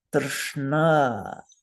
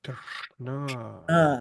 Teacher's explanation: It has one vocalic R in it, so that's the vowel, and then a cluster of consonants which are cerebral. So we're going to stick our tongue straight up into our brains and say, Drshna.